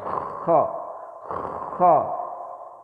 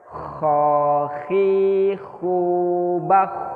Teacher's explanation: Kalau kerongkongan paling atas dekat dengan pangkal lidah berarti kerongkongan sini nih. Kerongkongan dekat pangkal lidah paling atas. Itu keluarnya huruf kho.